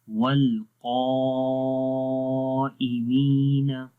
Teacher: قاف کی وجہ سے الف کیا ہو رہا ہے؟ موٹا ہو رہا ہے،